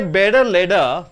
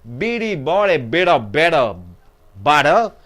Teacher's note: Here T in the middle, which is preceded by vowels, where the T changes into D.